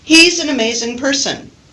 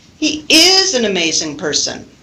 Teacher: if I want to emphasize the verb be, I can give emphasis to that and use the full form.